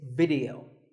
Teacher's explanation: both the I and the E are pronounced as short I sounds